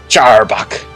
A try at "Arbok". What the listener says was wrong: It's called Arbok. Just call it Arbok. Don't make it pronounce a CH in the beginning for no reason.